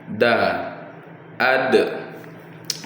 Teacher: ketika kita melafazkan huruf tersebut tidak boleh keluar udara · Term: sifat jaharnya